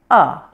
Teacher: the schwa has a sound like this ah it's quiet relaxed and neutral